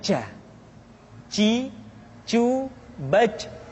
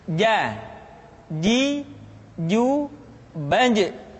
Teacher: dia tidak boleh mengalir nafas karena sifatnya aljahr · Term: huruf ja